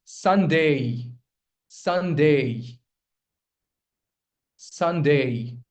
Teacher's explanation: You put stress on the first syllable.